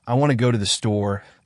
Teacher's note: the stressed words are want go and store and the unstressed words like to end are pronounced more quickly